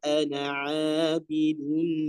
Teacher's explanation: alifnya di sini bukan dipanjangkan tapi tidak dianggap ya. Maka dibaca satu harakat saja. Kemudian ainnya tentu ya tepatkan lagi di makhrajnya yaitu pada ya tengah tenggorokannya.